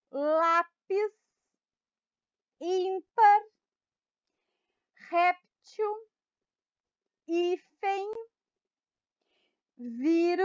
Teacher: todas essas palavras são paroxítonas porque a penúltima sílaba da palavra é a mais forte